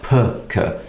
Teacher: So if we have a sound like B, K, because of the voiceless consonant K coming after the voiced consonant b, it will not be spoken like b, k, it will be pronounced like p, k, because p is the voiceless variant of b, and b is the voiced one.